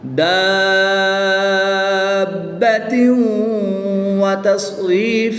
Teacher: تنوین کے بعد واو حروف ینملون میں سے ہے تو یہاں پر ادغام مع الغنہ ہوگا، یہاں پر غنہ کر کے پڑھیں گے · الف مدہ کے بعد سکون اصلی ہے تو یہاں پر مد لازم ہوگی، 3 سے 5 الف تک کھینچ کر پڑھیں گے